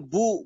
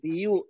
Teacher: نحن نقرأ بضم الباء، غيره الكسائي والبصري وغيرهما يقرأ بكسر بيو، لا احنا نقول بو بضم الشفتين.